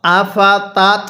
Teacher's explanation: আইনটা পড়ার সময় গলার মধ্যে হালকা চাপ দিয়ে পড়লে আইনটা সহি শুদ্ধা উচ্চারণ হয়